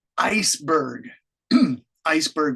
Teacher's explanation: iceberg Iceberg with the stress on Ice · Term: first word stress